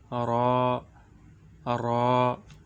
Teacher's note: জিহ্বার আগার পিঠ তার বরাবর উপরের তালুর সঙ্গে লাগাইয়া